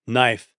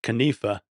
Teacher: we dropped the initial K because it's hard to say K and N together, and we dropped the final silent E.